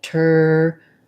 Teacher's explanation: This LE is a dark syllabic L. So there's kind of a little tiny hidden schwa in there · what we Americans do when they say turtle, is that they turn this T into a flap. So it's more like a D.